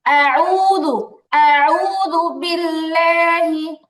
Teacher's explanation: দাল জাল যেটা সেই জালটা পাতলা এবং নরম।